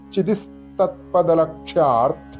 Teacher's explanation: [സംഗീതം] ഇത് ഒരുമിച്ു ചൊല്ലുമ്പോൾ ചിതി കഴിഞ്ഞ് ചിതി കഴിഞ്ഞ് വിസർഗ്ഗം വരുന്നതുകൊണ്ട് [സംഗീതം] വിസർഗം കഴിഞ്ഞിട്ട് വീണ്ടും ത വരുന്നുണ്ട് അങ്ങനെ വരുമ്പോൾ സംസ്കൃത സന്ധ്യനിയമം അനുസരിച്ചിട്ട് സ് എന്നാണ് വരിക